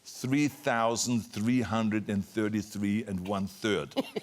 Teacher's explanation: So he had me say 3,333 1/3 with the TH and not with the S.